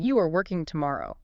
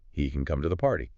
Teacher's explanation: The tone goes up, but the grammar doesn't change. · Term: rising intonation